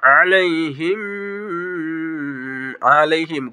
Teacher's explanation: টান হবে জবরের বাম পাশে খালি আলিফ মাদের হরফ আলাইহিম আলাইহিম গুন্না হবে মিম সাকিনের ঈদগাম